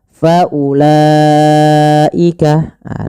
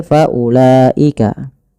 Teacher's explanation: Panjangnya empat atau lima harakat. Maka wajib kita panjangkan dulu lanya empat atau lima harakat. Faulaika ah tidak boleh kurang tidak boleh faulaika karena dia mad wajib. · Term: mad wajib muttasil